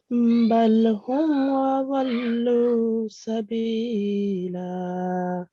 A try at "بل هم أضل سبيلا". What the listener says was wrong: Okay, these two lams. Okay, you pronounce this lam with a jerk, and we shouldn't make a jerk while pronouncing lam letter, because lam is not the letter of kalkala or jerking letter. Okay, so it should be recited normally. Bal hum, just clearly. And do not prolong this lam mushaddat.